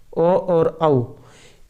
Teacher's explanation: ओ दयितौ कंठतालु कंठोष्टम, ओ दयितौ कंठोष्टम, ओ और औ इनका जो उच्चारण स्थान है ये कंठ और ओष्ठ से होता है।